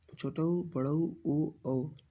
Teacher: वृत्तमुखी स्वर जिन स्वरों के उच्चारण में ओठ गोलाकार होते हैं या वृत्तमुखी होते हैं, जैसे छोटऊ, बड़ऊ, ऊ, औ।